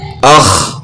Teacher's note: تو اس کا جوڑ اس طرح ہوگا، حمزہ خا زبر اخ۔ خا جو ہے نا گلے کے شروع سے ادا ہوتی ہے